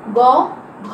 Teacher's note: গ, ঘ এই ধ্বনিগুলো উচ্চারণ করার সময় কি হয়, স্বরতন্ত্রী বেশি অনুরণিত হয় অর্থাৎ কাঁপে। তাহলে বর্গের প্রথম আর দ্বিতীয় ধ্বনিটা হচ্ছে অঘোষ, আর তৃতীয় আর চতুর্থ ধ্বনিটা হচ্ছে ঘোষ।